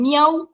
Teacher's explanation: tiene la vocal cerrada abierta cerrada